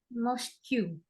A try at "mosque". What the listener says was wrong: Bukan, bacanya mosque. U sama E-nya nggak usah dibaca. Mosque. Ada Q-nya dibaca. Mosque. Ada Q-nya. Mosque.